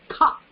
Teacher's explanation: So महाप्राणங்கறனால you have to articulate with more energy. பிராண சக்தி கொஞ்சம் கூட கொடுக்கணும். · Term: Mahaprana